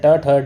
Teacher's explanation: ट ठ ढ ये मूर्धन्य होते हैं